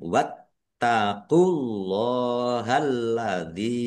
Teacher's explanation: Wattaqulahalladzi ilaihi tannya ada tasdidnya ya diak dobel ditekan ya wat dan ditahan wattaqulahalladzi Allahnya dibaca tebal karena harakat di depannya dommah · Allahnya dibaca tebal karena harokat di depannya dhammah. Lam fathah berdiri, mat tobi'i, panjang 2 harokat.